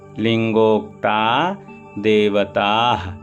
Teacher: देवता के बाद विसर्ग लगा, विसर्ग का उच्चारण थोड़ा सा हा होता है, तो उसको ध्यान देकर विसर्ग उच्चारण जरूर होना चाहिए।